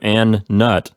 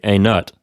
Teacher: you have to stop the first N and then start a new N sound at the beginning of the word nut